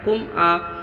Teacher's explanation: اظہار شفوی ہوا، ظاہر کر کے بغیر غنہ جلد ادا کرنا ہے